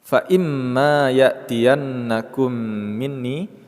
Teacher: mim bertasydid kita gunnahkan atau kita dengungkan